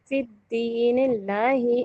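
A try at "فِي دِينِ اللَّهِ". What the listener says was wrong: देखिए फिद्दीन नहीं है, फी दीनिल्लाहि,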